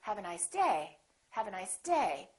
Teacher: I'm still gonna emphasize the word day but I'm not gonna make my pitch go up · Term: falling intonation